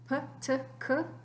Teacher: the p es bilabial oclusivo sordo, t, dental oclusivo sordo, y k, velar oclusivo sordo. P, t, k, todos oclusivos, todos sordos.